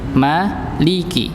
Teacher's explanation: Berikutnya mengimalahkan huruf lam nggih, pernah kita bahas nggih. Jadi jangan sampai kita baca li-nya jadi kayak le. Maliki. Nggih, li bukan le. · Nggih, maliki bukan maliki. Ya, jangan sampai berubah jadi imalah atau jadi antara apa namanya, antara fathah dan kasrah. Jadi hingga antara dua-duanya, nggak ada salah satunya.